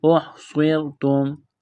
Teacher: ہے، صاد میں سیٹی کی آواز پیدا کریں گے، یہ دیکھیں را ساکن ہے اس سے پہلے زیر ہے تو را کو باریک کرنا ہے